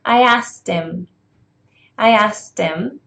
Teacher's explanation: in the fast speech we do not say him and her we say em and her